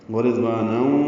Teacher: تنوین کے بعد واو آنے کی وجہ سے ادغام ناقص ہے، ورضوانا یہ غنہ بھی ہے۔